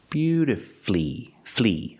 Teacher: is not correct we pronounce it with three syllables beautifully beautifully put the stress on your first and third syllable beauti F flee flee is the final syllable flee beautifully and